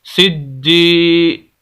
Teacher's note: جیم زیر یا جی، سجی، یہاں پر بھی وہی شد ہے، سخت کر کے پڑھنا ہے، آواز کو روک کے پڑھنا ہے